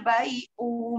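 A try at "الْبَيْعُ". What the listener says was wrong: Ya, u-nya keseret, jangan bai'u. Nah, jadi kayak dua. Pendekkan u-nya.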